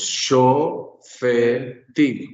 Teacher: el acento se me va para la sílaba final, haciendo que tim sea la sílaba tónica, fe sea la sílaba pretónica y sho sea la sílaba propretónica